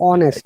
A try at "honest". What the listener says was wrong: No, H is silent.